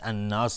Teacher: اکثر الناس، را مفخم است. الناس الف لام شمسی و نون مشدد 2 حرکت غنه میدیم